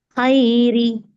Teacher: சுக்குன் செய்யப்பட்ட நூன் வந்திருக்கு அந்த நூனை வெளிப்படையா ஓதனும் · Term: நூனை வெளிப்படுத்தி ஓதணும்